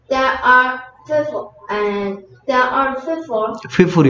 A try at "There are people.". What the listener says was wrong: People이 이제 P인데 F 소리 나냐? There are people.